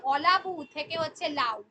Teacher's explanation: আদি স্বরলোপ কি হবে না, যখন প্রথম থেকে আদিতে যখন ধ্বনিটা লোপ পাবে, আদি স্বরলোপ মানে হলো উচ্চারণের সুবিধার জন্য যদি কোনো শব্দ বা পদের প্রথমেই যদি স্বরধ্বনিটা লুপ্ত হয়ে যায় তাকে বলা হচ্ছে আদি স্বরলোপ